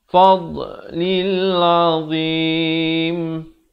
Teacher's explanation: makhraj huruf dad itu kena betul di tepi lidah. Kita bawakan ke tepi kiri, bawa ke kiri.